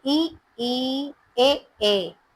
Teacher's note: पहले है अग्र स्वर, जिसको बोलते हैं फ्रंट वोवेल्स, जिसके उच्चारण में जीभ का अगला भाग ऊपर उठता है